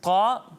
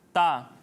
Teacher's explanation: ایک حرف ہے طا اور دوسرا حرف ہے تا۔ جب ہم طا کی ادائیگی کریں گے تو اسے پر پڑھیں گے، موٹا کر کے پڑھیں گے، لیکن جب ہم تا کی ادائیگی کریں گے تو اسے باریک پڑھیں گے